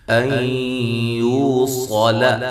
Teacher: کلمے کے شروع میں ہو تو وہاں مد جائز ہوتی ہے۔ ان یوصل یہاں نون ساکن کا ادغام مع الغنہ ہے ، یو واو مدہ ہے، صال صاد کو موٹا، لام کو